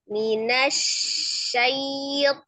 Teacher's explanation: Jangan minasyaito gitu ya. Tafasinya dulu di shin, kemudian ada harfulinnya.